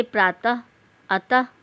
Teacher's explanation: विसर्ग का उच्चारण ह के रूप में किया जाता है